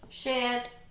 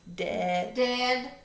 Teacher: we took a unvoiced fat stream and traded it with a tongue tapper, d, a voice tongue tapper, d. In the initial position, we changed shed to dead.